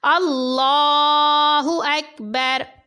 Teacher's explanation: اس میں لام کو پر پڑھا جائے گا اور کاف کو باریک پڑھا جائے گا، کیونکہ یہ کاف ہر حالت میں باریک پڑھنا ہے، تو اس بات کا آپ نے خاص خیال رکھنا ہے۔